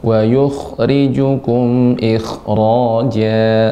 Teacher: kha ketika sukun dibaca kha-nya ada garukannya, wa yukhrijukum ikhraja.